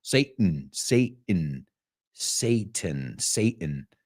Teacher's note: but Americans remember we use that glottal stop